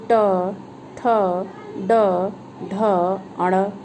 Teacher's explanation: ये तालु जिसको हम बोलते हैं ऊपर, क्योंकि जब हम ट बोलते हैं तो हमारी जो जीभ होती है वो मुड़ करके जा करके हमारे छत को यानी मुख की छत को छूती है, इसलिए इसे मूर्धा बोला जाता है।